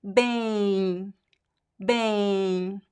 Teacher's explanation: the function of the letter M is just to make the letter E nasal. So it's pronounced like ain, and actually we add like a, we create like a nasal diphthong here. · So it's pronounced like ain, and actually we add like a, we create like a nasal diphthong here. I'm using quotation marks because it's not, you see it's not a diphthong in terms of letters, but it is a phonetic diphthong.